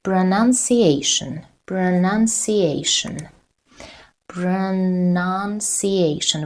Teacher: The 4th syllable is stressed.